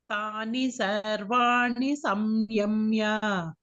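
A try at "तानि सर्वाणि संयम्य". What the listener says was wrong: Here you can try to say Saiyamya. Okay, there is the Visarga Anuswara rule is there. Saiyamya. Okay, I also chanted Samyamya. It is Saiyamya. Tani sarvani saiyamya.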